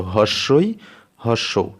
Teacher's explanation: এই দুটি স্বরবর্ণ উচ্চারণ করতে গেলে মুখবিবরের আয়তন সবচেয়ে কম থাকে। মুখবিবরের যে আয়তনটা, মুখবিবরের যে আকৃতি, সেটা সব থেকে কম থাকে। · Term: সংবৃত স্বরধ্বনি